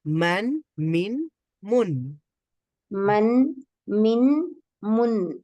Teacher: কিভাবে পড়বো আমরা মিম ফাতাহাত মানহাতাই মানসাইন শেষে একটা নুন হচ্ছে তানভীনের উচ্চারণটা শেষের দিকে একটা নুনের উচ্চারণ